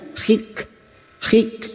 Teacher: Kaf sukun yang memiliki sifat hams dan sidah bunyinya